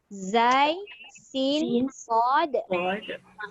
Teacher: Zai, sin, sod. Ini tiga-tiga bunyi safir atau berdesir.